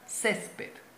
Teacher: donde tiene la mayor fuerza de voz césped en la penúltima sílaba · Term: palabra grave